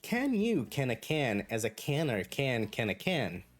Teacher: we're going to finish as a rising intonation for a question